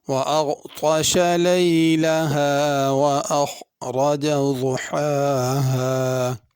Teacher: اغطش، غین کو پر پڑھنا، طا کو پر پڑھنا، تا نہیں پڑھنی۔ لیلہا اور ضحاہا، لیلہا میں چھوٹی ہا ہے، ضحا میں پہلے بڑی ہا ہے، پھر چھوٹی ہا ہے۔